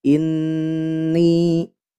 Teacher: sini ada Nun yang bertasdid maka hukumnya ghunnah musyaddadah Nah ya ghunah musyaddadah maka ditahan dua harakat